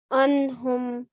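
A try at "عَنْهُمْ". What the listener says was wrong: Try and make that ain sound. Anhum. So wherever you see an ain, make that sound correctly, which you're doing very well.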